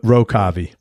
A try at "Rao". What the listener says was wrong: It's actually pronounced Rao, but even here people say Row because it spells Row.